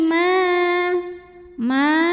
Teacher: cara membacanya dipanjangkan mimnya dua harakat